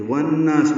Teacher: واو کو نون سے ملائیں گے، ادغام شمسی ہے. نا میں نون کو لمبا کریں گے اور سین ساکن پہ ہمس ہوگا.